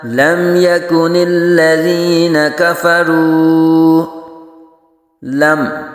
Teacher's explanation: لم يكن الذين كفروا من أهل الكتاب والمشركين منفكين حتى تأتيهم البينة لم يكن الذين كفروا لم یہاں میم ساکن، تو میم ساکن کے بعد حرف یا آ رہا ہے، تو یہاں اظہار شفوی ہوگا، یعنی میم ساکن میں غنہ نہیں کریں گے